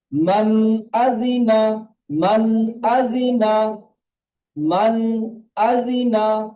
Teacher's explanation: নুনের উপরে সাকিন আছে, নুন সাকিনের পরে, নুন সাকিনের পরে হরফে হালকির 6টি হরফের মধ্যে একটি এসেছে হামজা, তাই নুন সাকিনকে বিনা গুণনায় জাহির করে তাড়াতাড়ি পড়তে হয় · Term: ইজহার